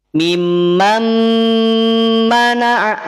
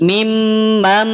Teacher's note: dengungnya dia sempurna berada di khoisyum, di rongga hidung. Sehingga ketika kita tutup hidung kita, maka dia akan terhenti. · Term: idgham bigunnah kamil